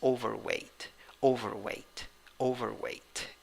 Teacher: The first syllable has the primary stress, and the third syllable has the secondary stress.